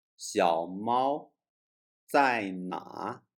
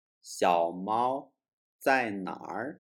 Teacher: The R sound is a typical sound in Beijing, but also commonly used all over China.